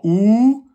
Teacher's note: Donc la lettre ou hein, on sort les lèvres et l'arrière se gonfle automatiquement.